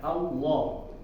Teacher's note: suara ini di ujung lidah seperti kiri kanannya ya, mengalir dari kiri kanan, bukan lurus ke depan. Jadi nggak mungkin kalau lurus ke depan karena tertahan juga dengan lidah ini sudah menempel di makhrajnya, di tempat keluarnya yaitu di gusi.